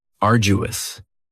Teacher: Now, you don't hear that D sound that much. It's not very strong. It almost sounds a little like a J.